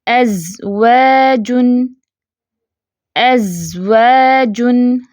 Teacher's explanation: جب زا ساکن ہوگا تو بزنگ ساؤنڈ زیادہ سنائی دے گی۔